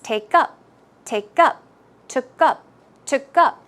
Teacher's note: the stress should go on the second syllable